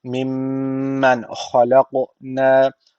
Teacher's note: ka harfi burada cezim aldığı için kalkale tecviti var. Birazcık vurguluyoruz.